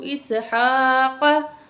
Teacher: وَهَبْنَا لَهُ إِسْحَاقَ، ہا کو پر کھڑی زبر ہے، ایک الف کو برابر کھینچیں گے اور کاف کو موٹا کر کے پڑھیں گے